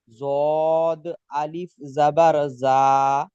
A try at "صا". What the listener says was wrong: হুম, যা কেন হচ্ছে স? স صاد ألف زبر صا।